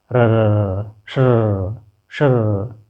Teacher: अंतस्थ के अंदर ही प्रकंपित व्यंजन या वर्ण मुख को प्रकंपित करते हुए र निकाल रहे हैं